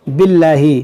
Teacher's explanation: اس میں جلالہ سے پہلے زیر ہے تو یہاں پر باریک پڑھیں گے